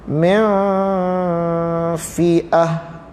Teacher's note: Ini contoh nun mati bertemu dengan fa. Jangan dibaca min, dibaca mew, diikhfakan, disembunyikan dia. Sembunyi nun, masuk pada fa.